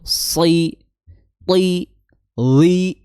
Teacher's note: meskipun dia berharakat kasrah dia tetap tebal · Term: huruf-huruf yang tebal